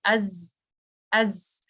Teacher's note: اور آپ کی اینڈ of the tip of the ٹنگ کہاں جا کر لگتی ہے؟ آپ کا جو نیچے والے جو دو دانت ہیں ان کی انٹرنل سرفیس پہ جا کر لگتی ہے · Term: لیٹر زئی